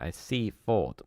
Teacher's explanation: The traditional Sussex pronunciation of the name has a full vowel in each syllable, Seafort. However, outside Sussex and increasingly within, it is commonly pronounced with a reduced vowel on the second syllable